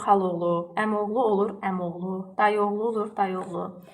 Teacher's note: saitdə uzanma olmur, sadəcə düşmə olur. Məsələn, xalaoğluda A düşür, olur xaloğlu, əmoğlu olur əmoğlu, dayıoğlu olur dayıoğlu.